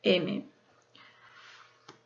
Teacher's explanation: se caracteriza por ser nasal porque el sonido se ve obligado a salir por la nariz